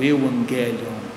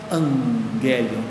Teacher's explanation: o que acontece na verdade é a nasalização do Gama ok ele passa a ser nasalizado e essa nasalização faz com que a pronuncia se passe então